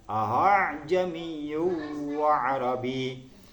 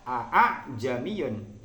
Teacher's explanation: hamzah yang kedua ini bacaannya diringankan, seolah-olah apa? Seolah-olah dibaca setengah makhrajnya ha. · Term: bacaan tashil